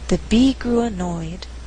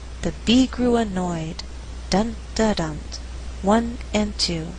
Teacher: In this sentence, we have three content words: bee, grew, annoyed. But I choose not to stress grew so that I have alternating stress. The resulting rhythm is the bee grew annoyed, dun da dun, 1 and 2.